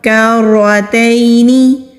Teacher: یا ساکین سے پہلے زبر ہے تو یا لین ہے۔ یا لین کو نرمی سے ادا کرتے ہیں، کھینچتے نہیں ہیں۔